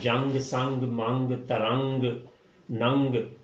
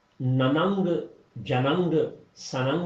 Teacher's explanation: بالکل اسی طرح سے جیسے جب ہم اردو میں بات کرتے ہیں تو جنگ، سنگ، منگ، ترنگ، ننگ، تو یہ ہم نننگ، جننگ، سننگ نہیں کہتے، نن، جنگ، سنگ ہی کہتے ہیں۔ تو نون کو ناک میں چھپا لینا ہے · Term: اخفا